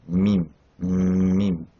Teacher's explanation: la bouche qui est fermée et le son qui va passer dans ce qu'on appelle le khayshum. Ici, c'est la voix nasale.